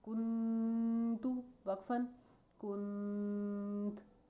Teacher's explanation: کاف نون پیش کن، تا پیش تو، کنتو وقفاً، کنت۔ یہ نون ساکن ہے، نون ساکن پہ غنہ اسی لیے ہوگا کیونکہ اس کے بعد تا آ رہا ہے، تا حروف اخفا میں سے ہے اس لیے، کنتو وقفاً، کنت۔